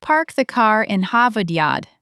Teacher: R's are dropped when they come after a vowel. Car becomes ca. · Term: Boston accent